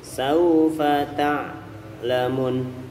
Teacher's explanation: bunyinya adalah u murni monyong